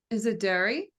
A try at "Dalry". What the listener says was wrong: No, that's an L in the middle. Dalry.